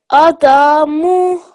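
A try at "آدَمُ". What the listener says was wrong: This one, which letter has the vertical fatha on it? So you should pronounce that for 2 seconds and the rest of them for 1 second, okay?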